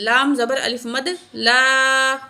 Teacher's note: بڑی مد ہے 5 کاؤنٹ کھینچ کے پڑھیں گے